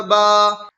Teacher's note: الف سے پہلے با کے اوپر زبر کی حرکت ہے، اس لیے الف مدہ ہوا، الف مدہ کو ایک الف کے برابر کھینچ کر پڑھیں۔